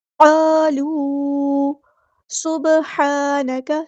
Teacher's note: سین میں سیٹی واضح کریں گے، با میں قلقلہ آئے گا، ہا کو مستحلق سے ادا کریں گے، ہا پہ کھڑا زبر ہے تو ایک الف کے برابر لمبا کریں گے۔ · قالوا سبحانک، سین میں سیٹی واضح کریں گے، با میں قلقلہ آئے گا